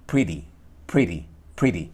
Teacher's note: lo que están haciendo es pineando la lengua un poco más adelante para que el golpe, el impacto ya no sea sobre el alvéolo, sino justamente detrás de los incisivos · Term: el flap